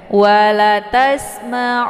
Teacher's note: Ada nun yang bertasydid lagi. Ini dinamakan dengan gunnah musyaddadah. Cara bacanya didengungkan. Wala tasma'unna ya, ditahan lebih kurang 2 harokat.